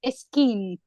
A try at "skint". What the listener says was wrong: Skint. Yeah, although I'm hearing a vowel before the S there. It's just skint. skint.